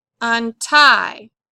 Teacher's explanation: Again, with this word, on is your prefix. The main root word is tie. The accent's going to go on tie.